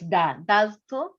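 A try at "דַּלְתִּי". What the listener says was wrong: What's that vowel for the tav?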